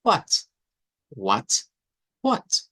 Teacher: le meten un como como una H aspirada al principio